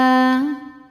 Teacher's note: Cara bacanya lam dibaca izhar atau jelas dinamakan dengan izhar qamari